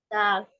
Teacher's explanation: Ujung lidah bertemu dengan pangkal gigi seri atas. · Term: huruf dal